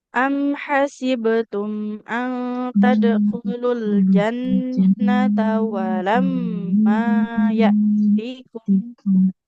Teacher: Walamma kan fathah, ada alifnya ya panjang.